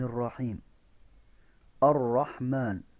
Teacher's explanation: را کے اوپر شد ہے، را کو سختی کے ساتھ پڑھیں گے. الرحمن کی ہا کو خا نہیں پڑھنا، ہا صفائی کے ساتھ اور میم کے اوپر کھڑی زبر ہے.